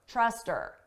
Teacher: we can get rid of that H sound and it just sounds like er